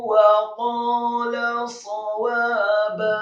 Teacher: sadnya dibaca fathah 1 harokat dengan posisi mulut dan bibir bawah agak tertutup, kemudian wawunya dibaca fathah 2 harokat karena setelahnya ada alif, kemudian ba-nya dibaca fathah 2 harokat.